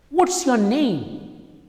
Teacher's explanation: if you're asking a question what's your name it's falling intonation